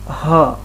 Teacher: અને ઘોષ ઉષ્માક્ષર એટલે જ્યારે આપણે હ બોલીએ છીએ ત્યારે એક ઘોષ પણ થશે અને હવા પણ બહાર નીકળશે